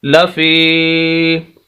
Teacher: ایسی یا ساکن جس کے پچھلے لفظ کے نیچے زیر ہو، یا مدہ کہلاتی ہے، لمبا کریں گے